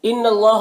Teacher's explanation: اللہ کے لام سے پہلے نون کو زبر ہے تو اللہ کے لام کو پر پڑھیں گے